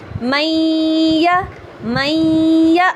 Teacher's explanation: غنہ ادا کر رہی ہوں، ٹھیک ہے، زیادہ دیر تک کر رہی ہوں، اس کا مطلب میں اس کے اندر غنہ ادا کر رہی ہوں۔ میں نون کو یا میں داخل بھی کر رہی ہوں اور ساتھ میں غنہ بھی رن کر رہی ہوں